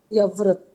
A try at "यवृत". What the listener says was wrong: या व्रत नहीं, इसको र क्यों उच्चारण कर रहे हैं? क्या है ये? यवृत। ये यवृत वाला नियम लगता है। यवृत होता है।